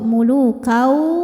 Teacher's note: Maka tanwin ini dimasukkan ke waw, mulukau, sambil ditahan, didengungkan sampai ada suara masuk hidung. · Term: idgham bi gunnah